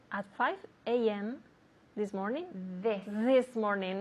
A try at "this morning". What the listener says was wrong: Remember that TH sound, okay?